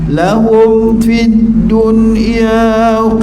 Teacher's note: dua mim mati fa juga jadi hukumnya izhar syafawi yang kuat maka kita putuskan suara kat situ